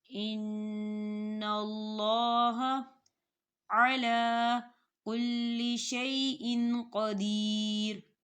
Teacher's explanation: دیکھیں نون کے اوپر نون مشدد ہے تو یہاں پر غنہ ہوگا